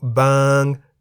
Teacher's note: บาง has one syllable which is a live syllable because it has a sonorant final consonant ง งู